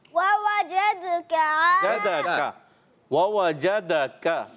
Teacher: پیارے بچے وَوَجَدَكَ، کاف کو ہم نے واضح کرنا ہے اور پھر عائلن پہ کیا کرنا ہے، کاف کو واضح کرنا ہے، کاف کو باریک رکھنا ہے